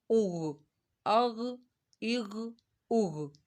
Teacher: غین جو ہے حروف مستعلیہ ہے، خا بھی حروف مستعلیہ ہے، ان کو موٹا پڑا جائے گا